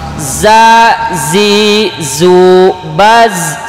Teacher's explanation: Zai, sin dan sod dari ujung lidah nempel ke ujung gigi yang bawah